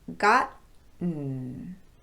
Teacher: The vowel sound after the T is not pronounced if we're using a glottal stop there. Instead, the n becomes a syllable by itself without a vowel sound